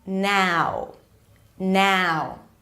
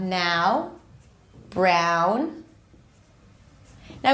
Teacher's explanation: part of the tongue is pulling back or the tongue is the tongue pulls back and you start with a and you move into uh